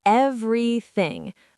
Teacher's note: The middle syllable almost disappears.